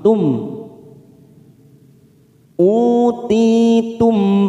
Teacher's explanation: Mim sukun di sini kita baca jelas namanya bacaan idhar syafawi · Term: idhar safawi